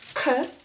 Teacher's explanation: Same position as ㄱ (the first one) But you put a bit more of power on your tongue So it's a bit stronger (than ㄱ) Next one is ㅌ,